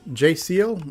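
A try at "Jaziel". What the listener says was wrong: if I remember my high school Spanish, there is not a J sound in the Spanish language. It's pronounced like an H.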